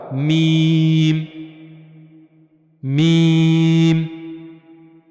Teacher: اوپر والے اور نیچے والے دونوں ہونٹوں کا جب باہر والا حصہ خشک والا آپس میں ملے گا تو وہاں سے ادا ہوگا میم